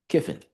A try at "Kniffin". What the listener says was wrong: So the K is actually silent, so it's Niffen.